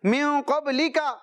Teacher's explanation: نون ساکن کے بعد قاف آ رہا ہے حروف اخفا میں سے, غنہ کریں گے نون ساکن میں